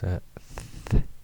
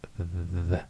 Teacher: it's a voiceless and voiced dental fricative. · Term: dental fricatives